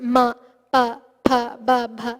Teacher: The oshthas are hitting themselves when we produce ma, pa, pa, ba, bha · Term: oshtya varnas